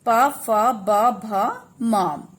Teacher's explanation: ओष्ठ ध्वनियां, जिसे बोलते समय दोनों होठ मिलते हैं